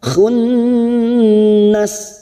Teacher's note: Nun yang bertasdid gunna musaddadah mendengung dan ditahan selama tiga harakat